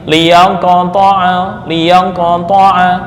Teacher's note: Sifat qalqalahnya lebih dekat ke bunyi fathah.